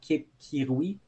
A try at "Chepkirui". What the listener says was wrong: Chepkirui, selon moi. Ben, comme Cheptegei, là, tu sais. Souvent, tu le prononces le ch.